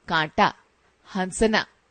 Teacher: इनका उच्चारण करते समय वायु नाक और मुंह दोनों से बाहर निकलती है। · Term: अनुनासिक